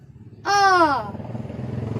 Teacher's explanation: अ। जब इसकी वायु का निकास होता है तो मुंह और नाक दोनों से होता है, लेकिन जो मुंह है वो पूरा खुलता है। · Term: अनुनासिक